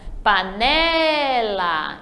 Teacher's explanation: Então, o né é a sílaba forte.